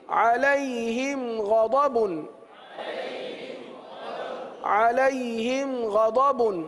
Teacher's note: اظہار شفوی کا قاعدہ ہوگا، یعنی غنہ نہیں کریں گے